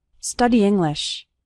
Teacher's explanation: Those two words kind of run together. The E from study and the I from English kind of combine